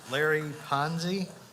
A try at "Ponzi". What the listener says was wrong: It's with an S, not a Z.